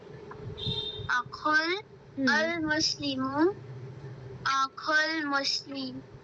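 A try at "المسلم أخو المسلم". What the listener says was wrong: Very good, इसका आप meaning पढ़िए।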